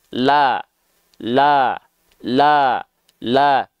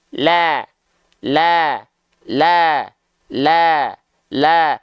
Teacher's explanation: dengan tersenyum, sifat istifal dan infitahnya lebih terasa. Maka kadar tipisnya akan lebih terasa.